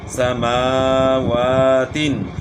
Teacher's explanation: سین کے اوپر پڑا زبر ہے تو اس کو سین کو نہیں کھینچیں گے، میم اور واو کے اوپر کھڑا زبر ہے تو اس کو کھینچنا ہے